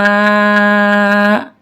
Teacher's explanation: یہ ہے مد متصل، اس میں ہم مد متصل کا رول لگائیں گے اور اس کو ہم 4 سیکنڈز کے لیے لمبا کر کے پڑھیں گے